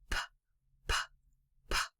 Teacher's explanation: So when I make that sound, I just put my lips together and a puff of air comes out. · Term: whisper sound